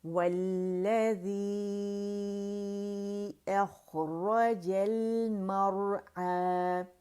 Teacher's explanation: اسے 4 to 5 counts ہم نے کھینچنے، مد منفصل جائز یہاں پہ بن رہی ہے، ٹھیک ہے، کیونکہ جو پہلا کلمہ ہے وہ ختم ہو رہا ہے حرف مدہ پر، دوسرا کلمہ شروع ہو رہا ہے حمزہ سے اور روانی ہو رہی ہے، 2 لفظ ہیں، ٹھیک ہے، 2 الفاظ ہیں، تو لہٰذا یہاں پہ وہ مد منفصل بنے گی، ٹھیک ہے۔